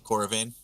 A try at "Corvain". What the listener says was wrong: There's a slight pause there, but yeah.